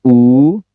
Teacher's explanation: kemudian ada U panjang, titik tekan 2 atau tense, monyong